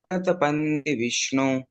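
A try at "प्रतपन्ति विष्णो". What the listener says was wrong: प्रतपंति विष्णु प्रत, त पूरा आएगा, बाकी पूरा सही बोला, बस त आपने आधा किया, बाकी बहुत अच्छा गाया, हरि बोल।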